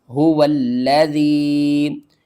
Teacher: ہا پیش ہو، واو لام زبر ول، هو لام زبر لا، ذال یا زیر ذی، هو الذی، واو کو ہم نے لام سے ملانا ہے، یہاں پر شد ہے، 2 بار پڑھیں گے لام کو اور سختی کے ساتھ پڑھیں گے